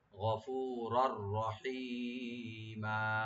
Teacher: আর রার উপরে যে তানবিন আছে, তানবিনের উপরে যেহেতু রা আসছে এখানে হরফে ইয়ার মালুম থেকে, এখানে ইদগাম হবে উইদাউট গুণনা, গুণনা ছাড়া